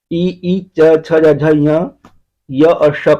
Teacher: इ इ च छ ज झ य य और श का उच्चारण स्थान तालू से होता है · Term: तालव्य